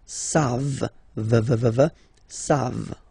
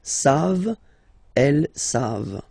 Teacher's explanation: classic ending for il and elle at the plural form, E-N-T, you don't pronounce it, so you get the sound savent, v-v-v-v, savent, okay?